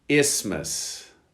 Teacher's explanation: You don't pronounce the TH necessarily.